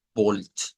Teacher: Esta es la O corta del alemán, que es O. No es como la O nuestra, que es completamente redondita.